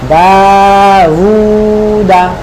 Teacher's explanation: দা আলিফ মাদ, হু ওয়াও মাদ বা উল্টা পেশ, আর দা কোনো মাদ না, তাড়াতাড়ি